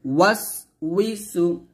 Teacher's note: উই ওয়াও জের উই দুই ঠোঁট গোল করে বলবেন